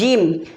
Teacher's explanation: बीच जुबान तालू से मिलकर जीम अदा होता है।